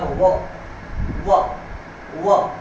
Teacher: दंत को और ओठों को, दांत और ओठों को मिलाकर एक वर्ण बनता है, वह व, यानी दांत भी इकट्ठे हो रहे हैं और ओठ भी। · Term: दंतोष्ठ